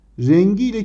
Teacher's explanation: Rengiyle kelimesinde kelimenin kökü renktir. Bakın K sesi yumuşayarak G'ye dönüşmüş. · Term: Ünsüz yumuşaması